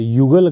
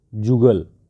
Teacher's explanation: य के स्थान पर ज हो जाता है।